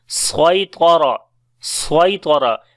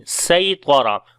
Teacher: Actually, this word was with the Seen, Saytara. But due to accent of those Arabic tribes, they pronounce Swad instead of Seen.